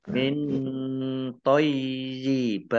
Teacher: nun sukun bertemu dengan huruf to, juga ikhfa, dibaca samar-samar.